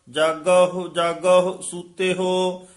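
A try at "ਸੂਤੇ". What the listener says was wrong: ए सूते हो ही उचारण करना, दलेंकड़ ला के सुते हो नहीं कहना, सूते हो।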